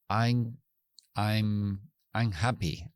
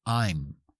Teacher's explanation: Cierra junto los labios, porque la M es bilabial, sin excepción.